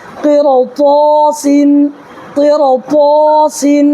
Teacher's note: وہی قاعدہ ہے کہ را ساکن ہے، را ساکن سے پہلے زیر ہے، لیکن را ساکن کے بعد حروف مستعلیہ میں سے طا آ رہا ہے، اس لیے ہم اس کو پر کر کے پڑھیں گے